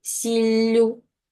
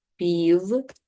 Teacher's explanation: подовження кінцевого приголосного основи